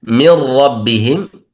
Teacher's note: إدغام كامل لكن من غير غنة